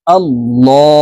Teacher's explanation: আল্লাহুম্মা, এখানে এই লামকে ল বলে উচ্চারণ করতে হবে, কারণ আল্লাহ শব্দের আগের হরফে জবর অথবা পেশ হইলে এই লামকে ল বলে পড়তে হবে, অর্থাৎ মোটা করে পড়তে হবে।